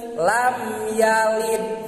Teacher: teu aya sora anu bijil tina liang irung anu ukuran panjangna nepi ka kedua harkat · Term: idhar